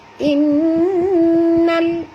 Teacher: In di sini nun bertasydid, wajib dengung.